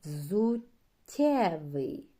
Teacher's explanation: пом'якшення попереднього приголосного та звук е